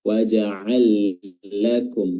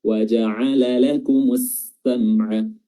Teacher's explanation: langsung lamnya disukunkan langsung masuk ke lam berikutnya dan ditasydid. Wa ja'al lakum. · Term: idgham kabir